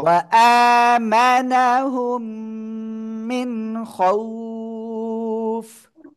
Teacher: এই যে মিম সেকেন্ডের পরে মিম আসছে গুণনা করবেন।